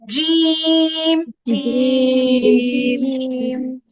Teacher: হা বলার সময় গলার মাঝখানে অবশ্যই হালকা চাপ লাগবে একা একাই চাপ লাগবে ধরে দিতে হবে না হা চেষ্টা করব